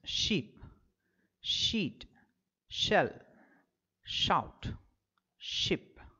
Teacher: the post alveolar position the topmost position of the alveolar Ridge the front part of the tongue raises towards the hard palate the air escaping through the narrow gap between the hard palate · the front part of the tongue raises towards the hard palate the air escaping through the narrow gap between the hard palate and the front part of the tongue producing audible friction or a hissing sound